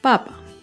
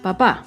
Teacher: Papa lleva el acento en la primera sílaba. En cambio, papá lleva el acento en la segunda sílaba.